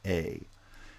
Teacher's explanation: A is a mid front tense vowel